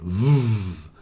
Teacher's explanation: it's like the f f but it's voiced so you add the vibration to the F and you get V